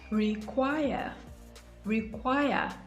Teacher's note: comes to dye disyllabic verbs that is verbs with two syllables the stress is usually placed on the second syllable